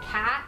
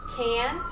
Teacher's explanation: So we're having this co-articulation happen that makes this vowel sound nasal, but it's not a nasal vowel sound, it's just kind of anticipating that nasal sound coming up.